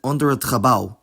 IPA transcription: ˈɔndəɹ ət χəˈbɑu̯